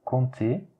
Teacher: compter, le P on ne le prononce pas